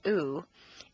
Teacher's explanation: the u sound is located far forward in the mouth and requires you to round your lips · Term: tense vowel